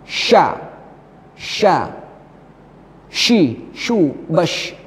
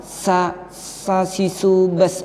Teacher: meratakan angin dalam mulut. Banyak anginnya di dalam mulut ketika mengucapkan huruf shin hingga bersambung dengan makhraj dha. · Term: tafasyi